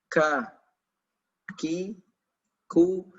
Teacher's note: Dia memiliki sifat namanya hams Apa itu hams ketika kita mengucapkan huruf ini maka dia keluar udara